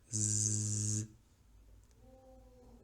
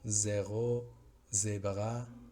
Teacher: El símbolo fonético es la Z, pero el sonido no es el que nosotros pensaríamos que es una Z. El sonido es parecido a la S, pero sonora.